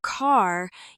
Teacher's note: In American English, the R sound is pronounced clearly in almost all positions. In some other accents, it disappears at the end of words, but in American English, it stays strong.